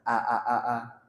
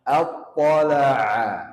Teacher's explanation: ain itu di tengah tenggorokan